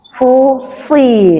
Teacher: Di mana makhrajnya si, so, ujung lidahnya ke gigi bawah, gigi bawah ya.